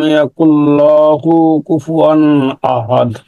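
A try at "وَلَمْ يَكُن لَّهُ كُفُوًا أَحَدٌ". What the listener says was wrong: হ্যাঁ, এখানে আপনি ওই যে এই হাফ পেশের উপর এদিকে আপনি লামের উপর আর কি মাত দিয়ে দিচ্ছেন, এটা যেন না হয়। অলামিয়া কুল্লাহু কুফুয়ান আহাদ, কুল্লাহু কুফুয়ান আহাদ।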